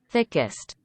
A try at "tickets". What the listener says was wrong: Okay, because you sound like this, tickets. Okay, tickets. S and T reversed. We need tickets. Tickets.